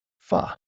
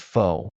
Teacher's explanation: the o in fu is a quick uh, not a long o